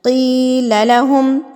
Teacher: میں کی کو کھینچ رہی ہوں، سوال یہ ہے کہ لمبا کتنا کرنا ہے، 2 حرکات کے برابر۔ 2 انگلیاں بند کریں اور 2 انگلیاں آپ کو کھولنے میں جتنا ٹائم لگے گا اتنا ٹائم آپ نے کی کو کھینچ کے پڑھنا ہے۔